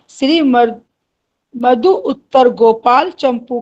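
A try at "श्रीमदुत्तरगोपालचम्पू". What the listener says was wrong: श्रीमद उत्तर, ये मध और उत्तर एक साथ है तो श्रीमद उत्तर गोपाल चंपू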